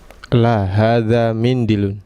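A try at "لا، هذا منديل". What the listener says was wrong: Iya, la hadza mindilun ya. D-nya dipanjangkan. La hadza mindilun.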